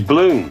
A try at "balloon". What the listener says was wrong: Why can't you say balloon? You don't pronounce the first syllable, though.